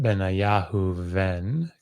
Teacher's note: And the reason is because it is following a vowel, so it becomes spirantized · Remember, if there's air flowing through your mouth because you're saying the sound of a vowel, almost always that will make it so that you'll get air flowing through the mouth as opposed to a bilabial stop or something. So instead of Benayahu Ben, you get Benayahu Ven.